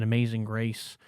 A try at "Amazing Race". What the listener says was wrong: Amazing. You sound like you said Amazing Grace.